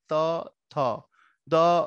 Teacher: এই বর্ণগুলো দন্তবর্ণ কেন দাঁতে উচ্চারিত হয়